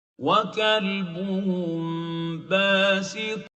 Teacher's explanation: And the hukum would be to make Ikfaa, hide the still Meem, the Sakinah Meem, and keep its Ghunnah for 2 units